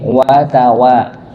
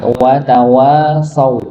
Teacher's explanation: Wa yang pertama dia satu harakat, yang kedua dua harakat.